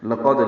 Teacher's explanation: لقد لام باریک قاف پر دال ساکن پہ قلقلہ